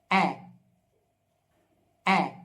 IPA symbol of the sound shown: e